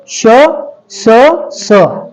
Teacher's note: स बघा स आणि श षटकोनाचा श दोन दातांच्या मधून ती हवा बाहेर येते